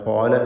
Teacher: ഇസ്തിഅലാൻ്റെ ഹർഫായ ഖാഫിനെയും അതിൻ്റെ ദീർഘാക്ഷരമായ അലിഫിനെയും തഫ്ഖീം ചെയ്യണം, തടിപ്പിക്കണം